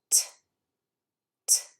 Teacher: I don't feel a vibration when I make that sound because it is an unvoiced consonant.